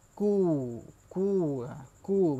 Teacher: Ku tu pun kena betul-betul baris hadapan, kena betul-betul muncung lah. Kena betul-betul muncung sebab dia baris depan.